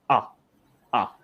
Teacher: So it's not really rounded or unrounded. It's sort of neutral.